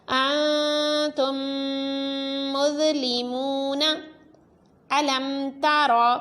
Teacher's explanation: انتم مظلمون الم تر، میم ساکن کے بعد تا ہے تو اظہار شفوی، غنہ نہیں کرنا۔